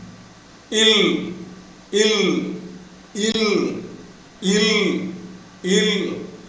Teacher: The air pushed out by the vocal cords escapes through the sides, through the two sides of the tongue when the tip of the tongue is having a tight contact with the upper teeth ridge.